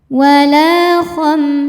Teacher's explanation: Karena ada alif didahului fathah maka lamnya panjang dua harakat. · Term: mad thobi'i